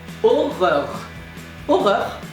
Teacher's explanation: like horror, but you pronounce every single R and you don't pronounce the H · So, horror, you remove the H, aura, and then you pronounce every single R as a French R.